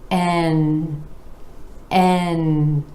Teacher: Again, our E vowel sound rolling into the N consonant where the tip of the tongue comes up to the alveolar ridge behind the top front teeth and the air is flowing out the nose.